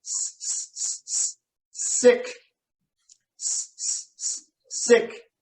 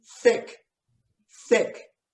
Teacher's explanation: That's a tough one, but you got to think carefully where you're putting your tongue, because that's what makes the sounds here. So the S is with your teeth, sick, and then thick is with your tongue in front of your teeth on the top.